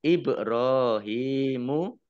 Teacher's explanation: ba sukun bacaan kolkolah dibaca memantul ditampakkan pantulannya